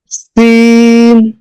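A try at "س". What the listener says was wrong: আরেকটু সিটি আওয়াজ হবে, মাশাআল্লাহ সুন্দর হয়েছে। আরেকটু করলে আরেকটু সুন্দর হবে। জি মাশাআল্লাহ, আওয়াজটা আগে বের হবে, হরফটা পরে উচ্চারণ হবে।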